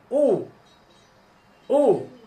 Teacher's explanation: পেশের উচ্চারণ, পেশের উচ্চারণ বাংলা রসুকারের মতো, যেমন ভ রসুকার বু, বা পেশ বু। পেশের উচ্চারণ করার সময় দুই ঠোঁট গোল করে মাঝখানে ফাঁকা রেখে হালকা শক্ত করে উচ্চারণ করতে হবে।